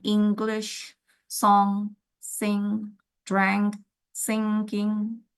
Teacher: The velum is lower, diverting the air through nose. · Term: nasals